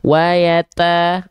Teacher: Jadi ada percikan-percikan nafasnya.